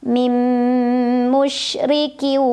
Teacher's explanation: huruf nunnya dileburkan ke huruf mim sambil dengung. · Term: idgham bi gunnah